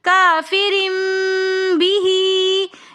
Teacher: کافرن کے اندر 2 زیر کی تنوین کے بعد با رہا ہے، تو یہاں پر اقلاب کا قاعدہ ہو رہا ہے، تو اس لیے ہم یہاں پر 2 زیر کی تنوین کی آواز کو میم کے ساتھ بدل کر پڑھیں گے۔ کافرن بھی، یہاں پر ہم نے اقلاب کا قاعدہ کیا ہے۔